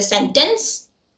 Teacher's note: as an Indian I would say sentence without the stress in in a monotone without the accent but over time because